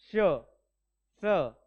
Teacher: आपण याचा उच्चार करताना तोंडावाटे गरम हवा सोडतो म्हणून त्याला उष्म म्हणतात